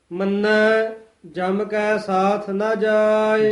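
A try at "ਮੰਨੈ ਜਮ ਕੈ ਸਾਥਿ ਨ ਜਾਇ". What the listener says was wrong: ਜਮ ਕਸ ਕੇ ਨਹੀਂ ਬੋਲਣਾ। ਮੰਨੈ ਜਾਮ ਕੈ ਸਾਥ ਨਾ ਜਾਏ।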